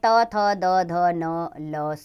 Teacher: दंत्य में त, थ, द, ध, न, ल, स आते हैं। दांत और जीभ इनका उच्चारण स्थान है।